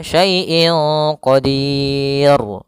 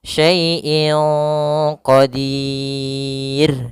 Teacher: Ro tarqik tidak boleh dibaca qadir jadi tebal. Misalnya saaiin qodir enggak tapi dia tipis rnya. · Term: ra tarqik